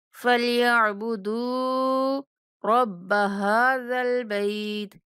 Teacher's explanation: دال کو 1 سیکنڈ تک لمبا کریں گے، واو مدہ ہونے کی وجہ سے۔ ہا کے اوپر کھڑا زبر ہے، ہا کو تھوڑا سا کھینچ کے پڑھیں گے، اور با کے بعد جائلین ہونے کی وجہ سے با کو نرمی سے پڑھیں گے۔